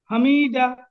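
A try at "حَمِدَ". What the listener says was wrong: হামিদা, জলদি, কোনো জায়গায় টান হবে না।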